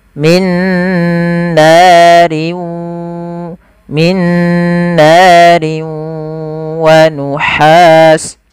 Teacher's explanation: masukkan tanwinnya ke waw dan ditahan suara wawnya. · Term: idgham bi gunnah